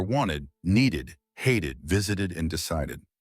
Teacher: the Ed ending adds an extra syllable to words when pronounced ID